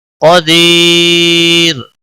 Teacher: یا ساکن کے بعد جب را ساکن آتا ہے تو را ہمیشہ باریک ہی پڑھا جاتا ہے. قاف کو موٹا پڑھیں گے.